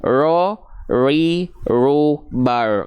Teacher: Walaupun dia getarannya sedikit tapi tetap tegas lugas dan jelas · dia bergetar tapi nggak berlebihan. Tapi bukan berarti juga hilang getarannya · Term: takrir